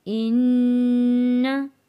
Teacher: इन्न नून तशदीद वाला है, गुन्ना अदा करेंगे।